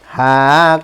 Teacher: উচ্চারণ কণ্ঠনালীর শুরু থেকে উচ্চারণ করতে হয়